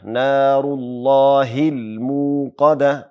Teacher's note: میم نه وروسته میم باندې پیښ ده او له هغې وروسته ساکن واو ده، نو لنډ مد کیږي، مد قصیر. موقده به نه وایو، موقده.